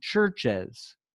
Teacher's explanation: It's like comfortable for you to add the E before the S. So you need to add that vowel to connect the final consonant cluster of church with the S ending